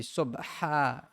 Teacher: It's a ha with a emphasis from the throat.